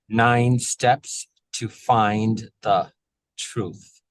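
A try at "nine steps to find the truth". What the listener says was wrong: Can I have you finish 9 before you start the S of steps? And then find, make sure that's a dull D. We need that vibration in the throat. Find.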